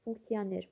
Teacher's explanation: İkincidə tələffüzündə bir səs artımı müşahidə olunur. Bəli, i, o saitlərin arasında y samiti əlavə olunur.